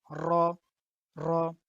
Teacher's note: যখন আমরা আরবিতে র বলবো তখন আমরা এটা মোটা করে বলবো